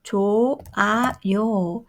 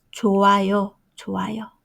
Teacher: H, the final consonant, doesn't sound.